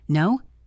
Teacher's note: Say it with a very high pitch like you are asking a question or are surprised.